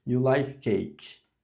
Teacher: Só de eu fazer essa rising intonation, a pessoa já entende que é uma pergunta, mesmo que eu não adicionei gramaticalmente ali o do.